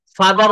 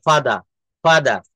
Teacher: আমরা ব্রিটিশ উচ্চারণে অনেক সময় দেখা যাচ্ছে যে আর এর উচ্চারণটা করা হয় না, সেখানে বলতে হয় আ, আ। হ্যাঁ, আর যেমন ফাদার বলা যাবে না, ব্রিটিশরা ফাদারকে বলে ফাদা, ফাদা।